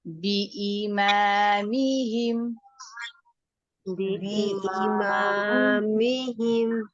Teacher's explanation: میم کی زیر کو مجہول نہیں پڑھنا ہے، آپ نے اس کو می کر کے پڑھیے۔